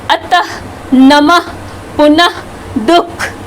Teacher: इसके उच्चारण में आधे ह की ध्वनि उत्पन्न होती है